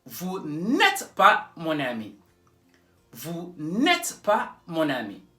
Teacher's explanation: You won't say vous ne êtes pas mon ami. No, no, no. You join them together.